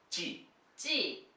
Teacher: Her mouth very tensed, releasing the air.